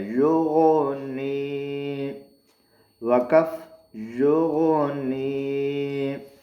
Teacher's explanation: یہاں دے، یا پیش غین یوغو، نون ذریعے نی، یوغنی۔ یہ غین موٹا ہے، حروف حلقی میں سے غین ہے، لیکن حروف مستعلیہ میں سے بھی ہے۔ حروف مستعلیہ کہتے ہیں جو موٹے حروف ہیں، ان میں سے بھی یہ غین ہے۔